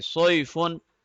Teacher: صاد heavy letter ہے، اس میں او کی ساؤنڈ آئے گی